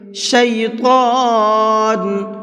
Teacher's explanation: طا کو بھی منہ بھر کے پڑھیں گے۔